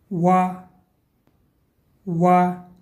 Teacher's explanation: Буква Вау образуется между губами, но при этом они не смыкаются. Губы не смыкаются.